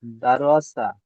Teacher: র উপরে জবার এসেছে তাই রকে পুর করে পড়ব